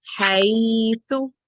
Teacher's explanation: it's yaleen, which we prolong it up to 2 seconds, few counts.